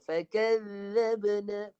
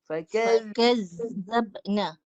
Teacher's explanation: Untuk zal dia guna suara. Suara keluar, lidah keluar, pegang gigi atas, guna suara.